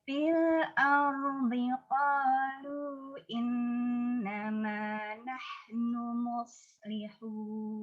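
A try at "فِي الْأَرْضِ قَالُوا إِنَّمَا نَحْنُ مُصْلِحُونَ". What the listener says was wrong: Ya, seperti mus kurang benar, yang itu kurang lurus maksudnya. Yang benar muslihun. Qalu lu. Jangan qalu lu. Harus U bunyinya. Karena tadi kaidahnya wa kullu maghumin dhammu syafataini dhamma fala yatimma illa bi dhammi syafataini dhamma.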